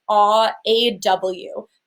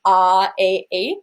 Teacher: I'm allowing my mouth to stay pretty rounded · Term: aw vowel